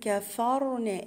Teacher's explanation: الراء مفخمة، ليه؟ لأن هي ساكنة وما قبلها مفتوح